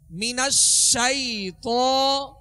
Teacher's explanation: تفشی کا معنی میں نے آپ کو بتایا تھا کہ پھیلنا، اور جب شین کو ادا کریں گے تو منہ میں آواز پھیل جائے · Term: صفت تفشی